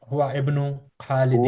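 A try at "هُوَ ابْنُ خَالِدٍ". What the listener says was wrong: वब्नु, इसको भी मिला के पढ़ना है, हुवब्नु,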